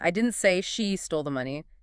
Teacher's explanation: And here, the source says the meaning becomes someone else stole it. By stressing she, you're pointing away from her as the culprit. The focus is on who did the stealing, and you're saying it wasn't her. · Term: Stress on she